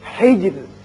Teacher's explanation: یہاں را جب ساکن ہو جائے گا چونکہ پیچھے زیر ہے اس لیے یہاں باریک رہے گا